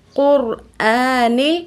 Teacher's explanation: رو ساکن اس سے پہلے قاف کے اوپر پیش ہیں، تو اس رو کو موٹا پڑھیں گے۔ جب بھی رو ساکن ہو، اس سے پہلے حرف کے اوپر زبر یا پیش ہو، تو اس رو کو ہمیشہ موٹا یعنی پر پڑھتے ہیں۔